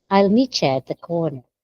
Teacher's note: That sound in meet you changes to ch like the word in church because of the following sound.